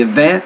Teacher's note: You say that word, say event. So put the stress on the second syllable